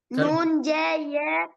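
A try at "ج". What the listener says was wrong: ஜேன்னு சொல்லி எழுத்தோண்டு இல்ல. ஜேங்கிறது எழுத்தோண்டு இல்ல. அது உருது பாசனா ஜேண்டிக்குது.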